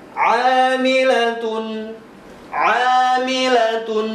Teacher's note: Jadi huruf pertama di sini adalah huruf ain. Jadi harus diusahakan benar-benar ketika mengucapkan huruf ain itu. Jangan sampai disamakan dengan mengucapkan huruf hamzah · Di sini huruf ainnya dibaca panjang 2 harokat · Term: Mad tabi'i